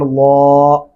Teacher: الف زبر لام, اللام کھڑی زبر اللہ, اللہ لام کے اوپر کھڑی زبر ہے اور لام موٹا پڑا جائے گا